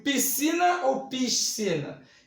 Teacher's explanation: então eu não pronunciei o s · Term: dígrafo